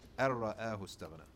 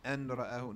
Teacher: Complete annihilation of the noon into the ra, or tucking it in completely. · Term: idgham